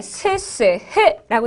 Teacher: 요건 파열음, 그 다음에 스스흐라고 들어가주면 요건 마찰이 생기면서 나오는 소리이기 때문에 마찰음이라고 이야기를 하고요